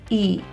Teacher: If you say E, you'll feel your tongue kind of close to the roof of your mouth in the middle.